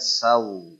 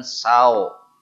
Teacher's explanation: Saw w-nya dilemesin namanya harfulin. Huruf lemes ya. W-nya kerasa tapi lemah